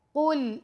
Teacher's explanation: قاف موٹا پڑھا جائے گا، قل، لیکن لام کو ہم نے باریک پڑھنا ہے